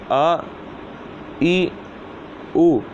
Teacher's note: حمزہ بھی ہا کی طرح حلق کے نیچے والے حصے سے ادا ہوگا